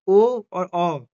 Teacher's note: ओ और औ ये बोले जाते हैं कंठ और ओष्ठ से